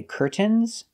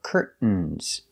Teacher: are these are curtains pronunciation curtains we have two correct pronunciations you can say curtains pronouncing the T or curtains making a stop T Curt and then fall to the N Curt curtains so the